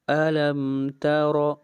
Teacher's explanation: را کے اوپر زبر آ رہی ہے، را کو موٹا پڑھیں گے